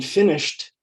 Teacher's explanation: in finished the e d sounds like t